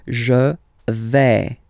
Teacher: when you combine this A-I, you get the sound E, really open